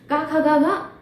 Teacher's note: ठीक है, क्या होता है, कंठ होता है। यानी कि का वर्ग का उच्चारण जो होता है कंठ से होता है